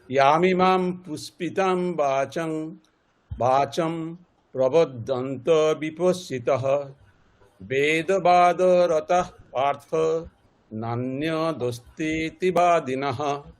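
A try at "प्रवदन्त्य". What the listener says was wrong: দেখুন, এই প্রবাদান্তিয়া, ওই দন্তের নয় তো জ ফেলা, মানে আপনারা সংস্কৃত উচ্চারণ শিখছেন, তাহলে এগুলোর উচ্চারণটা আরো স্পষ্ট করতে হবে। বাংলাতে যেমনটা একটা জাস্ট বাংলাতে আমরা ঠিক ইয়া ফলের উচ্চারণটা এমনই করি, প্রবাদন্ত্য এরকম, তাহলে আরো স্পষ্ট করে প্রবাদন্ত্য।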